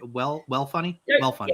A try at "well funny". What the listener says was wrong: Yeah, don't pronounce the L. Well funny.